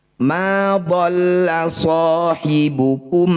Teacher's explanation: sukun bukan bertemu mim atau ba ini disebut bacaan izhar syafawi bunyi mim baca dengan jelas rapatkan bibir tidak usah dengung